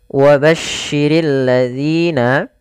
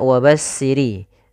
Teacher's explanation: pada lafaz bacaan wabasyirilladzina ini sempurnakan di huruf syin yang mana syin memiliki Salah satu sifat yaitu sifat tafasyi yang di mana dimaksudkan adalah intisar menyebarnya suara di dalam mulut